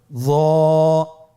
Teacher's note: জিহ্বার আগা, সামনের উপরের 2 দাঁতের আগার সঙ্গে লাগিয়ে উচ্চারিত।